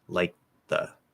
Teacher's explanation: i'm keeping that voiceless when i close it because it's supposed to be liked with a t like and then when i release it i had a little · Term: dental d